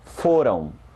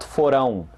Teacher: Pay attention to the stress, which is on the first syllable. Foram, and not forão.